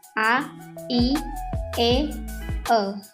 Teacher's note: Vokal tak bulat atau unrounded vowels, yakni vokal yang diucapkan dengan bentuk bibir tidak bulat atau terbentang lebar